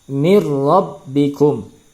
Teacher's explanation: maka bunyi tanwin masuk ke dalam huruf ro tanpa disertai dengan dengung Allah ada tekanan saja tekanan karena masuknya tanwin ke dalam huruf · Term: idgham bilagunnah